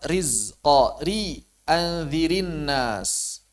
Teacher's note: walaupun dia kasrahnya kasrah arid tetap dibaca dengan tipis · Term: tarqiknya ro